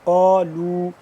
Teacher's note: قاف علی زبر قا موٹا کر کے پڑھیں گے